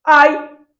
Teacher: Eu consigo falar ai com o nariz tapado? Ai. Consigo falar normal. Então é um ditongo o quê? Oral. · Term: ditongo oral